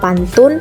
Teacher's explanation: bunyi P pada silabel pertama kata pantun dilafalkan secara apikoalveolar. Perubahan bunyi hambat bilabial P menjadi bunyi hambat apikoalveolar adalah karena pengaruh nasal apikoalveolar N. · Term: asimilasi regresif